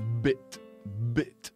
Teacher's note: that's how the typical English B is pronounced it's voiced from beginning to end